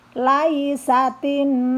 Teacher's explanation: Laisatin dibaca mendengung karena nunnya bertasydid. Nah, di sini hukumnya wajib gunnah.